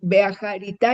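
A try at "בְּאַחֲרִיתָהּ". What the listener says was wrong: Lo hiciste muy bien. Hay que pronunciar esa G.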